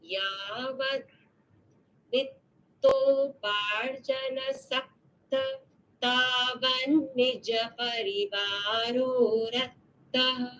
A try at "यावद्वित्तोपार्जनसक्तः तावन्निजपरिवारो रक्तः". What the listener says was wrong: Take this as a visarga here. So, saktaha. Yavad vitto parjana saktaha तावन्निजपरिवारो रक्तः